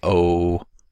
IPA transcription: o